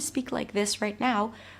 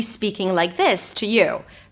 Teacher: when I lower my voice, when my voice is a little deeper and fuller